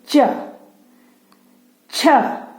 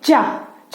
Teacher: चा, चा बोलने पर हवा कहाँ रुक रही है? च, यानी कि तालु में। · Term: तालव्य वर्ण